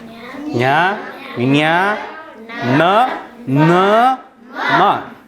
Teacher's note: ಮೂಗಿನ ಭಾಗದಿಂದ ಹೆಚ್ಚಾಗಿ ಹೊರಡಿಸುವಂತಹ ಶಬ್ದಗಳಿಗೆ, ಆ ಥರದ ಅಕ್ಷರಗಳಿಗೆ ಅನುನಾಸಿಕಗಳಂತ ಕರಿತೀವಿ